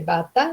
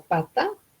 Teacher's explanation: La B presenta su contraparte P. Entonces, en ese modelo tengo que la B es de bata, digamos, y luego tengo pata, su contraparte sorda sería la P